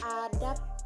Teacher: sebab itu pakai B, tapi ketika kita mengucapkannya menjadi sebab pakai P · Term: Netralisasi